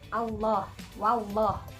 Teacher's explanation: lafadz Allah yang dibaca tafkhim tafkhim itu maksudnya dia tebal ya lafadz Allah ini dibaca tebal atau dibaca tafkhim